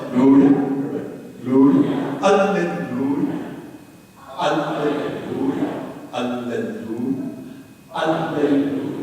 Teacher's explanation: Lu is the accented syllable. And it's also the smallest vowel.